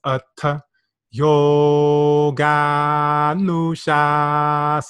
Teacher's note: slightly longer right so it's a yo god Musha um and you'll notice the O is also a long vowel right so we hold those slightly longer